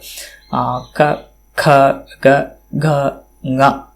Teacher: क इति इत्यत्र साक्षात् कण्ठस्थानं जिह्वायाः स्पर्शः तत्र अनुभवः भवति साक्षात्। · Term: कवर्ग्याः